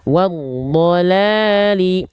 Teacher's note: alif lam tidak dilafazkan atau diabaikan karena bertemu dengan huruf hidup yang bertasydid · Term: alif lam syamsiah